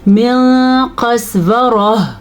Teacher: جب وقف آ جائے اور گول تا آ جائے تو گول تا ہا بن جاتی ہے